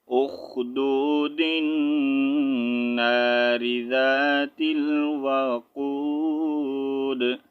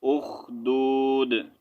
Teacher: اگر سٹاپ نہیں کریں گے، یہاں پر آپ ملا کر پڑھنا چاہیں گے تو پھر دال کو نون کے ساتھ آپ نے جوائن بھی کرنا ہے اور یہاں پر غنہ بھی کرنا ہے